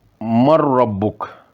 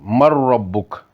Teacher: ادغام تام نی مثالاں: مر ربک، اتھے نون نی آواز را وچ مکمل مدغم ہوئی گی اور صرف میم جڑا وا اور را نال ملی گا، نون نی آواز ظاہر نہیں ہونی۔